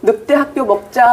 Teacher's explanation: 늑대 학교 먹자 전부 뒤에 된 소리 나죠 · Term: 된소리화